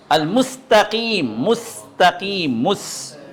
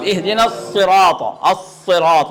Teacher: اس میں سین ہے، یہاں باریک، سین یہاں باریک ہو گیا. اور اس سے پہلے الصراط میں، الصراط میں صاد یہ موٹا